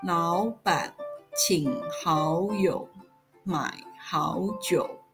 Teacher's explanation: the tone of the sentence is second, third, third, second, third, third, second, third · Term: third tone